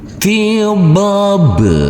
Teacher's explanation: di atasnya ada huruf alif kecil yang berdiri tegak lurus tiab huruf ba yang bersukun ini wajib kita pantulkan karena di sini adalah bacaan Qalqalah